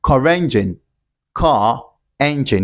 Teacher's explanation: we have a vowel word immediately after that sound, after the sound r. You have to produce it, you have to pronounce it and link it.